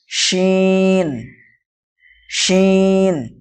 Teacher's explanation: জিহ্বার মাঝখান এবং তার বরাবর উপরের তালুর সাথে লাগিয়ে উচ্চারিত হয় শিন।